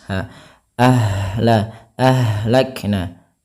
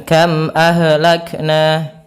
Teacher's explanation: ha di sini juga ada yang kita namakan dengan sifat rokhawah, mengalirnya nafas.